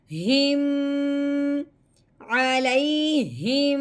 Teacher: ٹھیک ہے, میم ساکن کا غنہ کیسا ہوتا ہے, اوپر والے ہونٹ اور نیچے والے ہونٹوں کو دبا کے ہلکا سا اور ناک میں سے آواز نکالنی ہے